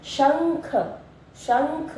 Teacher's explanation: और जब हम इसको पढ़े शंख मुंह और नाक दोनों से ध्वनि आ रही है, और जब हम हंस बोल रहे हैं तब भी मुंह और नाक दोनों से ध्वनि आ रही है, इसलिए हम इन्हें अनुस्वार भी कहते हैं।